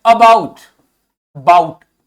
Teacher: ठीक, तो ध्यान ये दीजिए कि जो ये आपके वाउल्स हैं, अबाउट, बाउट, ओ यू तो पूरा प्रोनाउंस हो रहा है, लेकिन आ हल्का प्रोनाउंस हो रहा है।